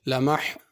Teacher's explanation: لمح ہا بڑی ہے، اس کو چھوٹی ہا نہیں پڑھنا